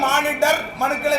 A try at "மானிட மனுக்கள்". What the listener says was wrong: மானிடர்னா அந்த மானிடர் இல்லப்பா, மானிட மனுக்கள்.